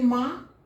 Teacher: तो शिरोरेखा के जब ऊपर कोई भी मात्रा नहीं हो और उसका उच्चारण मुंह के साथ साथ नाक से हो रहा है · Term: अनुनासिक